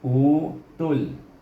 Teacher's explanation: Bunyinya utul. Utul ni tadi 2 harakah mak badal, tul 1 harakah. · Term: mad badal